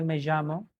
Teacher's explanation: It's neither completely ja neither completely ya, it's in the middle